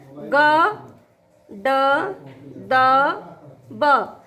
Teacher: देखिए सघोष में अल्प प्राण होता है ग, ड, द, ब